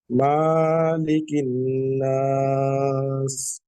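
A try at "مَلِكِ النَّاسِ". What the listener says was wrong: মালিকিন নাস, মালিক টান হবে না, দেখেন তারেক ভাই, ওইটা হচ্ছে মালিক ইয়াউমি, ওটা একাধিক টান আছে। আর এটা মালিকিন নাস, টান নাই।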